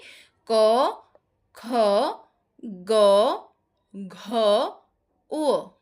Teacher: আলঝিবের কাছাকাছি যে নরম তালুটা আছে সেখানে একটা বাধার সৃষ্টি করছে এবং তার ফলে হলে তৈরি হচ্ছে কন্ঠ ব্যঞ্জন।